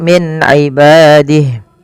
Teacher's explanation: nun sukun bertemu dengan ain, yaitu dibaca dengan jelas suara nunnya karena dia ada bacaan izhar halqi.